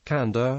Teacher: before alveolar and alveolo-palatal consonants, it becomes a syllabic alveolar nasal n